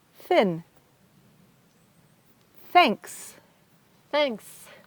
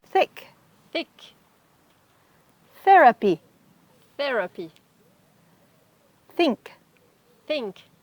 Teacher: And for the TH that is voiceless, it is very soft. Your tongue touches your teeth, but there's no pressure.